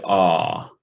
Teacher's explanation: when it is articulated the tongue is in the lower part of the oral trend so that's that's that that's uh that's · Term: low vowel